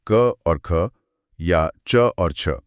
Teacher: जैसे क और ख या च और छ। अगर हम गले पर हाथ रखकर इन्हें बोलेंगे तो पाएंगे कि आवाज बिल्कुल साफ और बिना गूंज की है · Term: अघोष